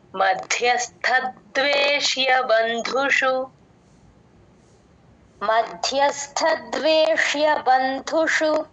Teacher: ద్వేష్య బంధుషు దు కి మహాప్రాణం ఉంది గమనించండి